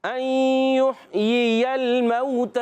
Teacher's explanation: پہلے والے زیر کی حرکت نہیں کھینچیں گے دوسرے والی کی بھی نہیں کھینچیں گے مگر دوسرا زبر والا ہے وہ لام سے مل جائے گا